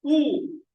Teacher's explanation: Oo is a rounded vowel because I'm rounding my lips.